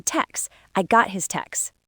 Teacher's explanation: In fast speech, native speakers will often drop the T and just say text.